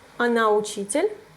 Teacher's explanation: we don't even change it to make a question just use the intonation